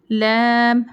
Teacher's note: زبان کی نوک اوپر مسوڑوں کو لگانا ہے, لام باریک.